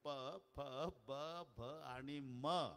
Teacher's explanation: म च्या वेळेला वटाला वट लागतात वटाला वट लागल्याशिवाय म चा उच्चार होत नाही